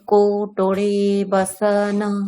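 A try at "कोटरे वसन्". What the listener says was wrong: কোটরে না ম্যাডাম, কোটরে, অকার। বসনা না ম্যাডাম, হসন্ত আছে। বসন,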